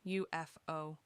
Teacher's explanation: The first sound is that Y sound, a consonant.